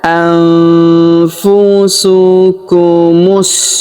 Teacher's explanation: huruf mu langsung disambung masuk ke huruf sin atau sa yang berharokat sukun